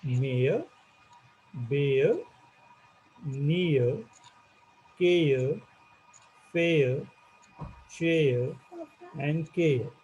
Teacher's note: where you pronounce only the last sound and you do not pronounce this r, because r is silent